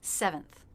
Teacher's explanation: stress is on the first syllable. So the second will be shorter, flatter, and lower in pitch. Seventh. We begin with the S consonant sound and E vowel, just like second, so make sure you're dropping your jaw enough for that E vowel.